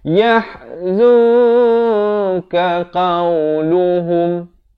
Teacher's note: Disamarkan. Berapa panjang? 2 harakat. Samar saja. Nak kata bunyi nun pun tidak, kaf pun tidak. Kalau baca yahzun jadi izhar. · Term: ikhfa hakiki